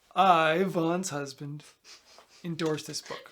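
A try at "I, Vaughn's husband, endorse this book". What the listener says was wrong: you said vol's husband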